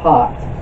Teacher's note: The sound of this vowel is a plain open ah sound. It is similar to the sound of the short O in American English. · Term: petach